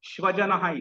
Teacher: चुकून आपण दंत सकाराच्या ऐवजी तालव्य सकार वापरला